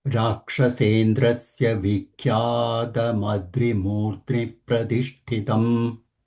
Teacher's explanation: The Murdni's Ni is a conjunct, but Mu is a Dirgha. So Mu is not getting a Dvitva sound.